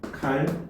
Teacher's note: 표기와 발음을 비교를 해보면 니은이 리을로 교체가 됩니다. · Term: 유음화